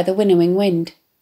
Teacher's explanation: The softness of the consonant pht sounds and the alliteration of the w in combination with the assonant short I sounds, in a stanza otherwise dominated by long vowel sounds, particularly long E sounds, seems to mimic the breathiness of the gentle wafting of the breeze as it rises and falls.